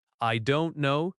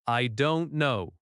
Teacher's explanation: The word no drops slightly at the end.